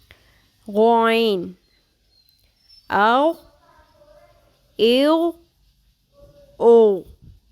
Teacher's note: غین بھی پر ہے، اس کی صفت بھی پر ہے، لیکن اس میں خراش نہیں ہوتی